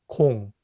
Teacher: 공 has the vowel O, which makes a round O sound.